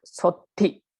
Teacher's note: It is a long vowel, but in this example, it is before a conjunct or a double consonant. So because of that, we read this O as short, like sothi, not sothi.